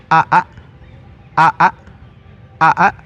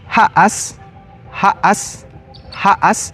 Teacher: Y el último sonido que tiene la a es la vocal reiculada, es decir, hay dos vocales y en medio de ellas as hay una eh una glotal que le va a dar una pequeña pausa entre las dos